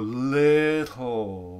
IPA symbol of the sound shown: tˡ